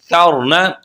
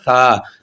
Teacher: اوپر والے دانتوں کے ساتھ زبان کا کنارہ لگے گا, اوپر والے دانتوں کے کناروں کے ساتھ, تو یہ نکلے گا ثا. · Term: ثا کی آواز